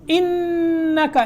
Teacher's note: یہاں نون میں غنہ کرنا ہے اور کاف کو باریک رکھنا ہے